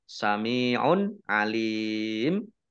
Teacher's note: dhomah tanwin bertemu dengan huruf Ain bacaan izhar dibaca jelas tetapi karena bertemu dengan huruf terakhir yang dibaca sukun karena waqof